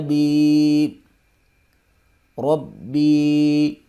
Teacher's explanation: یا ساکن سے پہلے زیر ہے، یہاں پر مدہ ہو رہا ہے، یعنی کہ ایک الف کے برابر اس کو کھینچ کے پڑھیں گے۔